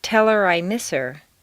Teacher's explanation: On personal pronouns, it's common to drop the H.